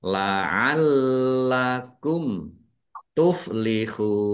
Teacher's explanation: Mim sukun bertemu dengan huruf ta. Bacaan izhar syafawi dibaca jelas. · lamnya dibaca dobel ada tasdidnya biar tampak dobel maka ditekan dan ditahan